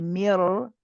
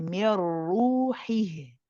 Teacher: the noon has essentially just changed from being a noon to becoming a full ra. And this ra is heavy. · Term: idgham